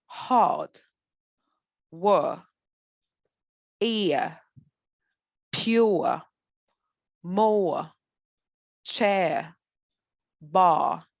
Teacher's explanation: The British R is not actually an R. It's a vowel sound that is the schwa.